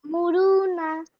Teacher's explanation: ওয়াও মাদ্দাকে এক আলিফ পরিমাণ টান দিয়ে পড়তে হবে। নুনের উপর নুনের ওপর জবর এসছে, জবরটি হলো হারাকাত, হারাকাতের পড়াকে তাড়াতাড়ি পড়তে হবে, টান দেওয়া নিষেধ।